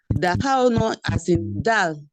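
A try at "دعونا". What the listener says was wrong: No, it's ain. Dal ain wow nun alif da'awna.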